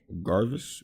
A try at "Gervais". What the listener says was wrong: Gervais. Ricky Gervais. Yeah, Gervais. The S is silent.